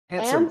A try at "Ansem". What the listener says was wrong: The H is the H is completely silent.